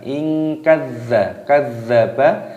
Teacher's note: zalnya berharokat tasdid, ini ditekan diidghamkan